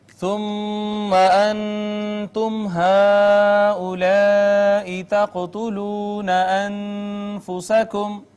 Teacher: میم مشدد پہ گنہ ہے، نون ساکن پہ اخفا، میم ساکن پہ اظہار شفوی، مد متصل، قاف پہ قلقلہ، واو مدہ، نون ساکن پہ اخفا، میم ساکن پہ اظہار شفوی۔